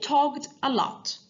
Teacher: The verb talked, the ed ending, sounds like t sound because the verb talk ends in the voiceless sound k sound.